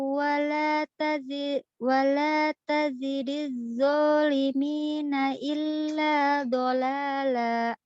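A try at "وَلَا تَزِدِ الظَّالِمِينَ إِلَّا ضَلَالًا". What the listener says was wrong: Dha-nya tebalkan sedikit. Wala tazidil dha. Beda dengan zi. Wala tazidil zalimi. Wala tazidil zalimina illa dalala. Dha. Wala tazidil dha. Zi.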